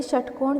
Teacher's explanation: षटकोण जब हम बोलते हैं तो इसका उच्चारण मुर्धा से होता है